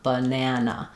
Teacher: So my stress syllable, the a does say a. The unstressed syllables, I have the schwa sound